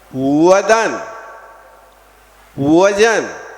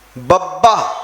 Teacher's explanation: जब वा का उच्चारण किया तो आपके ओठ टच नहीं करेंगे · जब वदन बोलोगे तो ओंठ छू नहीं पाएंगे, और बब्बा बोलोगे तो ओंठ को छोड़ के आप बोल नहीं पाओगे।